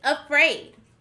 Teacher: we hear the uh sound at the beginning of the word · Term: schwa